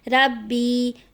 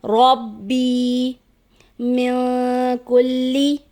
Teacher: رو پہ زبر ہے، اس کو موٹا پڑھنا چاہیے، رو کو با کے ساتھ ملا کر واضح کر کے پڑھنا چاہیے، جو کہ عموماً نہیں پڑھا جاتا، اس کو پڑھ دیا جاتا ہے ربی، جو کہ درست ادائیگی نہیں، درست ادائیگی ہے ربی من کلی۔